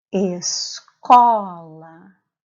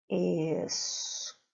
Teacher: A sílaba tônica é a sílaba có.